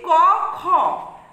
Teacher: এই ব্যঞ্জন ধ্বনিগুলি উচ্চারণের সময় স্বরতন্ত্রের কম্পনের সুর মেশে না। তাই এদের বলছে অঘোষ ব্যঞ্জে ধ্বনি।